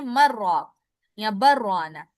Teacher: اگر آپ سکتہ نہیں کرتے تو پھر آپ پڑھیں گے مر راک یا بر روانا، جس طرح لام کا را میں ادغام ہو جاتا ہے